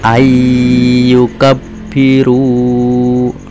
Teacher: Nah kemudian contohnya lagi yang lain ya, ayyukabbiru ya, ini nun mati bertemu dengan ya ya, maka nun matinya suaranya masuk ke dalam ya yang hidup, maka tidak dibaca an yukabiru, tapi dibacanya ayyukabbiru. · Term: idhom bihunah